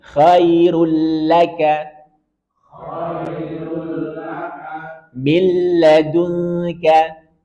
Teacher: dengung ketika bertemu dengan lam dan ro kalau yanmu dia dengung kalau lam dan ro maka tanpa dengung